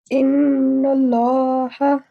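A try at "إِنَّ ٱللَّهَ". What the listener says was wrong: Well done, Jazakillah.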